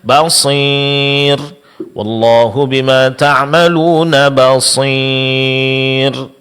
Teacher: mencampur suara mad ya dengan sedikit daripada ghunah yaitu disertai dengan dengung.